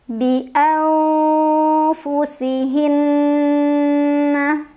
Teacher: Ada gunnah musyaddadah karena ada nun yang bertasydid. Cara membacanya didengungkan ditahan kurang lebih 2 harokat. Bi'anfusihinna lam at-tabi'i karena ada huruf berbaris fathah berdiri.